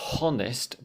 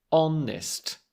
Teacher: So, not h-onest, but honest with the /o/ sound, the vowel sound. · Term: silent Hs